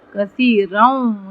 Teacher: یہاں پہ ہم غنہ کریں گے، ایک الف برابر، یہاں پہ ادغام ہو رہا ہے، کثیروں یہاں پہ ہم تنوین نہیں پڑھیں گے، یہاں پہ ہم الف پڑھیں گے، کثیروں، اور یہاں پہ ہم تفخیم کریں گے.